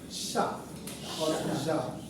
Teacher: See, fricatives, the air is forced out. Sha or ja, forced out.